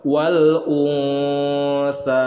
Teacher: Nah, di sini alif lam qamariyah, kemudian nun sukun berhadapan dengan huruf tha. Hukum bacaannya adalah ikhfa, didengungkan kemudian ditahan 2 harokat.